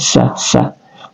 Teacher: sin di sini adalah tarful lisan, keluar di ujung lidah kita